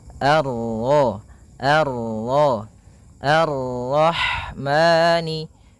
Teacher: kita baca dengan bacaan Al sebagaimana yang di atas Al kemudian ini bertemu dengan huruf ro yang berharakat tasydid maka rnya kita baca dengan tafkhim